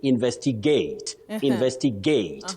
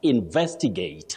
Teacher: Now gate is not supposed to be stressed. Now the stress is on the second syllable after the sounding in then you come with a stress vest.